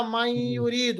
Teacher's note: آپ نے یہاں پر ادغام کیا، نون ساکن کو یا کے ساتھ ملایا، نون ساکن کے بعد یرملون میں سے کوئی حرف آئے، یا را لا میم واو نون، تو کیا ہوتا ہے؟